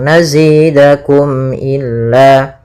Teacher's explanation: Maka di sini mim ketemunya alif atau ketemu hamzah, maka kita namakan dengan izhar syafawi. Tidak boleh ditahan suara mimnya tapi langsung nazidakum illa. Kemudian pada lafal illa ada kembali mad tabi'i berupa fathah bertemu alif.